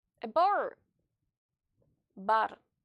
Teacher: in Russian it's pronounced R. R. So you have to roll the letter R in Russian.